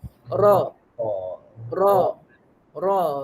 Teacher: belakang tepi hujung lidah dilengkungkan ke gusi hadapan sebelah atas ro ro ro RI huruf ro ro ro dia ada getaran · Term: huruf ra